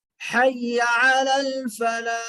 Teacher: وہ ہا بیچ حلق سے ادا ہوتی ہے